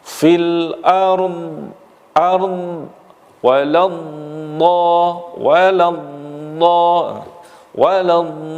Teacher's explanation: bahwa huruf dot ini sifat makhrajnya panjang, perbatasan dengan lam sampai dengan geraham yang paling belakang. Maka di situ nanti akan memunculkan sifat yang namanya istitalah, memanjangnya suara dalam makhraj.